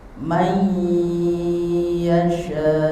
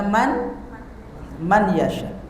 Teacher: Apabila ada nun mati atau tanwin bertemu dengan salah satu huruf idqam bikunah yang empat, maka bacanya masukkan nun mati atau tanwinnya dan didengungkan. Jadi masukkan dulu nun atau tanwinnya kemudian didengungkan.